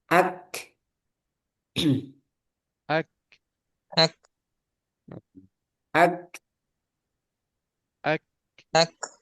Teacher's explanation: jadi setelah ditahan suaranya baru dilepas itu namanya Hames